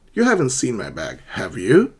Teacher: a rising intonation, you're not sure